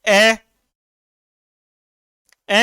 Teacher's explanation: अ में होठ गोल नहीं हुए ना